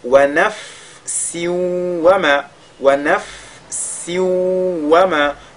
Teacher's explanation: tanwin qui sont sous la lettre sin vont fusionner dans la lettre waw. On est dans le cadre de idgham bighun. · la lettre fa, lorsqu'elle est sakina, on a dit qu'on lit la lettre fa avec al-hams